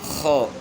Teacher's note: خو جہاں سے خرخراہٹ کی آواز نکلتی ہے تو وہاں سے اس کو ادا کرنا ہے, لیکن خو کو موٹا پڑھنا ہے, یعنی موٹے حروف میں سے خو کو موٹا پڑھنا ہے. لیکن خرخراہٹ جو ہے نا زیادہ پیدا نہیں کرنی, صرف یہ کہ مقصد یہ کہ اس جگہ سے ادا کرنا ہے.